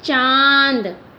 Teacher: मैं अपने कंठ और अपने मुंह और अपने नाक दोनों का ही इसके उच्चारण में प्रयोग कर रही हूँ। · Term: अनुनासिक